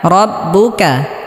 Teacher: কাফে হালকা বাতাস বের হবে